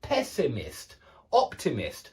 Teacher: we put the stress on the o and the same with the noun pessimist we put the stress on the first syllable